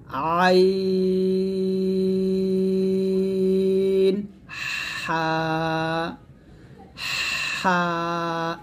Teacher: আইন এবং হা উচ্চারণ করবেন গলার মাঝখানে চাপ দিয়ে চিকন করে